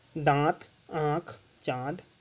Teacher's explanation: जब मुख और नाक दोनों से हवा निकले, लेकिन नाक से बहुत कम और मुख से अधिक सांस निकलती है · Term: अनुनासिक